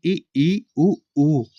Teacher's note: अगला प्रश्न है संवृत स्वर होते हैं तो ये होते हैं ई उ ऊ। इसके उच्चारण में कम मुख खुलता है।